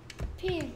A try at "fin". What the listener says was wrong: 핀 핀이 아니고 자 선생님 입 봐봐 핀 윈니가 아래 입술을 치면서 핀 그렇지 뜻이 뭐라고